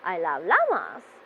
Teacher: as it is a positive sentence your voice will be going down towards the end of the sentence